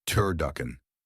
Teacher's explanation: Three syllables. Primary stress on the second syllable. Duck. Start with tur rhyming with fur using the voiced alvolar t plus the mid- central vowel e.